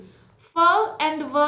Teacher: the lower lip comes closer to the upper teeth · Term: लेबियोडेंटल